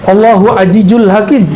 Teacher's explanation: Orang Betawi itu nyebut za itu jadi ja. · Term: za jadi jim